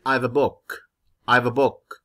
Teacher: the basic sentence stress here would be on the book the last word in the sentence